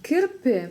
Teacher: К мягкое здесь, потому что слово мягкое.